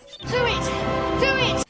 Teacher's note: So there is a W sound, which somehow got into this phrase.